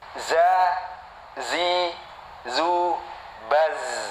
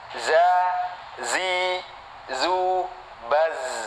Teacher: Ini dari pucuk lidah antara gigi atas dan gigi bawah lebih condong ke bawah. Masih di dalam ya. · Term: huruf zai